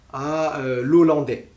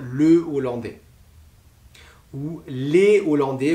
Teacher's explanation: ou les Hollandais, vous ne faites pas de liaison. Donc pas de liaison et pas d'apostrophe. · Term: H aspiré